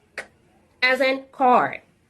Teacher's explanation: This is a voiceless sound. It takes place at the velum. And it's a stopped sound.